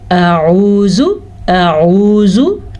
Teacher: आऊज़ु में हमज़ा और आइन दो मुख्तलिफ मखरज हैं। इनको एक मखरज से निकालना गलत होगा। मतलब हमज़ा का साउंड है अ और आइन का साउंड है ऊ, आऊ।